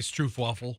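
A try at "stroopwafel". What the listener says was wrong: No, it's Stroop. It's not Stroof. Stroop waffle.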